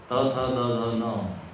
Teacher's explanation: त थ द ध न, ये दंत्य वर्ण।